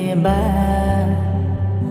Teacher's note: দুই ঠোঁট ভেজা হতে মিলিত করে বলতে হবে বা